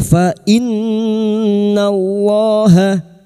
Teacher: Ha hau fainnallaha fainn yang bertasdid gunna musyadadah. Kita dengungkan selama tiga harakat